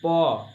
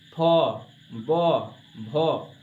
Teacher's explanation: पोफो का उच्चारण स्थान आपका ऊपर वाला होठ और नीचे वाला होठ दोनों आपस में जब तक चिपकेगा नहीं तब तक इसका उच्चारण नहीं होगा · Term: ओष्ठ